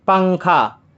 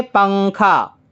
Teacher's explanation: پنکھا نہیں بولتے ہیں، پنکھا بولیں گے تو اظہار ہوگا، پنکھا بولتے ہیں تو نون چھپتا ہے، اخفا ہوتا ہے نون کا۔ تو زبان کو ہمیں نون کے مخرج میں نہیں لگانا ہے، ہوا میں رہے گی ہماری زبان، ٹکرائے گی نہیں جا کر کے، تب اخفا ہوگا۔